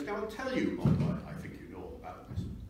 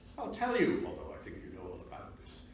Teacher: The pitch drop that is there for the parenthesis.